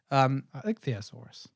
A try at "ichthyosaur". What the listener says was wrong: No, ichthyosaur. There's no US at the end. Yeah, an ichthyosaur. Ichthyosaur. Ichthyosaur. Ichthyosaur.